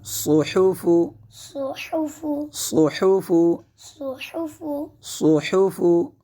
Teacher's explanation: صحفو، یہاں پہ صاد کو پر پڑھیں گے کیونکہ صاد حروف مستعلیہ میں سے ہے، صاد حروف مستعلیہ میں سے، اور حا کو حلق کے درمیانی حصے سے ادا کریں گے